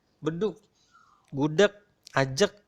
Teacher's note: bedug gudeg Ajeg nah ini Sebetulnya pakai huruf G belakangnya tetapi secara tidak sadar kita lagi-lagi mengucapkan bedug seperti bunyi Kak bukan bunyi G